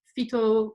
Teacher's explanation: the ventiv is marked by the suffix which is a long o vowel and in addition to a high tone that then replaces the tone of the of the root so uh aloha uh verb becomes fito with all um high